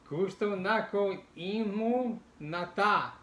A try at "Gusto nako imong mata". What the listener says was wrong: Not nata. Mata.